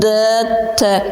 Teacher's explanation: Тіліңіз таңлайыңызға тиіп, сол жерде пайда болып жатырды. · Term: Тіл алды дауыссыз сеслер